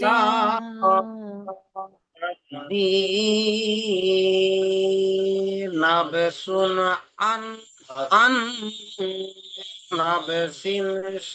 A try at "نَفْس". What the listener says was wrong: নাব পড়ছেন, নাব নয়, নাফ, নাফ, নুন ফা জাবর নাফ। আপনি পড়ছেন নাব।